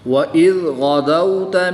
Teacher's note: غین حروف مستعلیہ میں سے ہے تو اس کو پوری یعنی نوٹا پڑھیں گے۔ واو ساکن سے پہلے حرف پر زبر ہے تو اس لیے اس کو لمبا نہیں کریں گے۔